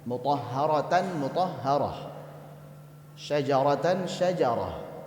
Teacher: saat wakaf saat berhenti maka dia berbunyi ha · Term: ha taknitif